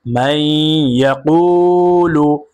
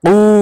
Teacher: মান ইয়াকুলু, ইয়াকু, কফ ওয়াও পেশ, কু, পেশের পরে ওয়াও সাকিন মাদে হরফ এক আলিফ টেনে পড়তে হবে মাদ্দে তবাই।